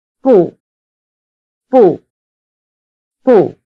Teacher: Notice that the word for no in this exchange is simply bù in the falling tone.